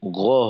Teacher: গয়েন কিন্তু গা হবে না, গ হবে